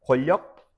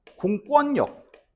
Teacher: 그냥 이음절 권력은 유음화가 발생돼. 근데 앞에 공이 붙잖아.